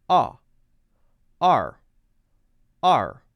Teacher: with A-R-E, I'm just saying ah, and then directly folding my tongue up into the R position.